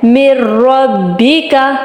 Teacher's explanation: اب را، نون ساکن کے بعد اگر را آ جائے تو ہم نے کس طرح پڑھنا ہے، غنے کے بغیر